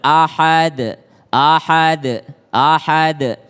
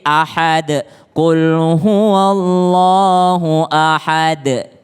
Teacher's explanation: qolqolah kubro qolqolah yang besar karena berada di akhir kalimat maka dia lebih tebel